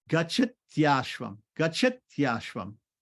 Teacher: the short I turns into a semi-vowel Y. So it's going to be gachatyashvam, gachatyashvam.